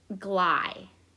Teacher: The first syllable is gly, because it's ending in a vowel. I make that long, and so that's going to be open.